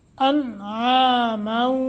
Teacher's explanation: نون تنوین کے بعد واو مشدد ہے غنہ کریں گے